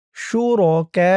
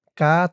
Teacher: চার আলিফ টান মধ্যে মুত্তাসিল।